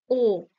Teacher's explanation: যে সামনে এর দিকে আগিয়ে থাকছে নাকি পিছনের দিকে পিছিয়ে থাকছে ও জীবটা দেখো একটু পিছনের দিকে যাচ্ছে না তো সেজন্য এটা কি হবে পশ্চাৎ ও পশ্চাৎ স্বরধ্বনি এরপর